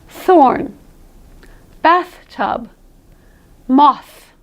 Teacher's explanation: you'll be pushing forth so much air that you really won't get any vibration at all · you won't get the vibration on your tongue that you got if you practiced a Soft TH correctly. The sort of "thhh" sound, which feels like vibration to you, but we hear it as a sort of a hum. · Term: Strong TH, strong TH